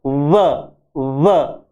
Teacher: होठ थोड़े चौड़े होते हैं, और डेंटल यानी दांत उसके ऊपर आके लगते हैं, जैसे होठ चौड़े हुए और उसके ऊपर लगा फ और व। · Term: लेबियो डेंटल